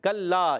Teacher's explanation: کاف باریک، کاف زبان کی جڑ تعلق کی سختی سے ادا ہوتا ہے. کلا، یہ بھی کلا وہی تھا، تو ایک الف کھینچنا بھی ہے، لام مشدد ہے.